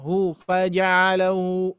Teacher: Hu faja'alahu harus jelas. Hu harus jelas ya di pangkal tenggorokannya. Di pangkal tenggorokannya harus jelas, dan juga bunyinya sedikit menggema ya, sedikit menggema.